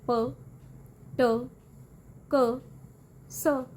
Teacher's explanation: ਵੌਇਸਲੈਸ sounds ਉਹ ਹੁੰਦੀਆਂ ਨੇ ਜਦੋਂ ਵੋਕਲ ਕਾਰਡਸ ਵਾਈਬ੍ਰੇਟ ਨਹੀਂ ਕਰਦੇ